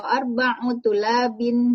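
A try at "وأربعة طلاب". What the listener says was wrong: Wa arba'atu. Bukan arba'u Ibu, arba'atu. Tu-nya kurang tadi.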